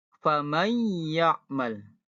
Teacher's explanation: dibacanya menyerupai huruf tersebut dan disertai dengan dengung atau ada getaran pada hidung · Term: idgham bila ghunah